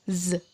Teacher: Kedua gigi atas dan bawah ditautkan, dan kemudian ada getaran dari arah tenggorokan